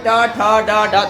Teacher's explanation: दांत से जस्ट थोड़ा ऊपर, जो दांत के ऊपर ऊंचा जो भाग है ना, ऊंचा हल्का सा ऊंचा है कि नहीं, वही सट रहा, वही मुर्दा है। और मुर्दा में जब सटता है तो टा ठा बोल पाते हैं।